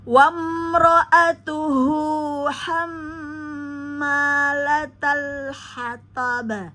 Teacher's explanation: Wajib dengung dua harakat ya. Ham tahan dulu baru dipanjangkan karena ada alif sukun ya. Huruf sebelumnya pada mim musadadah berharakat fathah.